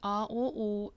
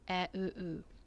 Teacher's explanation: when you say A, U, your tongue is at the back. And when you say E, U, your tongue is touching your front lower teeth